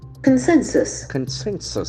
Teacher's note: The accent falls on the second syllable, consensus.